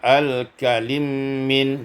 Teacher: idgham mim fil mim, diidghamkan mim pada mim maka menjadi al-kalim min.